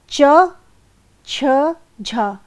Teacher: जहाँ च, छ, झ, इनके उच्चारण के समय जिह्वा के अगले ऊपरी भाग तथा कठोर तालु के बीच स्पर्श और संघर्ष ये दोनों होता है, इसलिए इन्हें स्पर्शी संघर्षी व्यंजन कहते हैं।